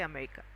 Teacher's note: Very slight sound of R is there but we have to consider it as silent.